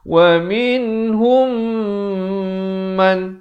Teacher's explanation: Mim mati bertemu mim dibacakan dengan dengung dua harakat. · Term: idgham mislan saghir